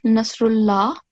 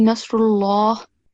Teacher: it's dhamma, then the lam has to be thick. Instead of Nasrullah, it will be Nasrullah.